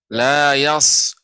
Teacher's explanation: Makhrajnya seperti sin. Akan tapi dia ditebalkan. Naiknya suara ke langit-langit. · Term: shad